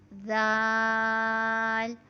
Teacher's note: دونوں دانتوں کے بیچ میں ہم اپنی زبان کی نوک کو لگائیں گے تو حرف زال ادا ہوتا ہے